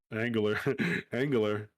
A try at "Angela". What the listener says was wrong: Angela. Angela. the R is not part.